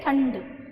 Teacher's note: जो न की साउंड है जो ध्वनि है वो नाक से निकल रही है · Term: अनुस्वार